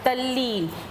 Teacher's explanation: तो अगर कहता है तत् धन लय कहता है, ठीक है ना, तत् धन लय कहता है तो ल का संयोग किससे हो रहा है, आपका त का संयोग हो रहा है ल से, इसलिए त ने खुद को आधे ल में बदला तो तत् लय से बन जाता है हमारे लिए तल्लय, तो तत्लीन से हो जाएगा तल्लीन।